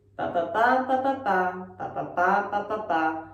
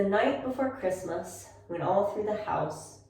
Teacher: Okay, so we are going to analyze the first 2 lines of this poem, and you're going to find this rhythm or intonation pattern where we're going ba ba ba ba ba ba ba ba ba ba ba ba ba ba ba ba ba. So we reduce things and go up, reduce, go up, reduce, go up